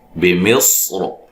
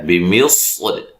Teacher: ہم اس را کو موٹا بھی پڑھ سکتے ہیں، باریک بھی پڑھ سکتے ہیں